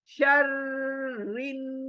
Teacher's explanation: बासे के अंदर, وَمِن شَرٍ، شر رو موٹی ہے، شر رن، نون شدہ ہے، نون شدہ آلویز گنگنانا ہے